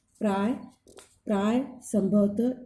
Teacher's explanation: अब विसर्ग का प्रयोग संस्कृत के तत्सम शब्दों में मिलता है। इसका उच्चारण ह की तरह होता है